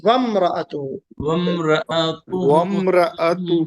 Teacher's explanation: واؤ کو میم میں ملائیں گے، الف سائلنٹ ہے، یہ الف نہیں پڑھیں گے